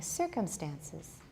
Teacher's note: you're saying circumstances that's too many stresses and in this case the main stress is at the beginning